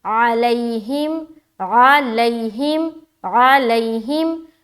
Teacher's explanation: یا ساکن سے پہلے زبر ہے لہٰذا یہاں پر یا لین کا قاعدہ بن رہا ہے، نرمی کے ساتھ جلد ادا کریں گے. لین حرف ہمیشہ زبر کے ساتھ ہوتا ہے، یعنی کہ یا ساکن سے پہلے زبر ہو تو یا لین، واو ساکن سے پہلے زبر ہو تو واو لین، دونوں صورت میں آپ کو زبر ہی آئے گا.